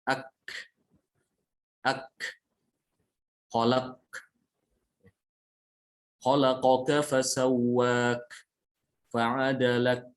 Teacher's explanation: huruf kaf dia itu tertahan suaranya karena tertutupnya mahraj